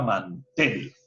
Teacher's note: la mayor fuerza de voz está en la última sílaba